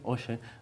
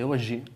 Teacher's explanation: en vez de con o xis que pronunciamos nós, con unha consoante sonora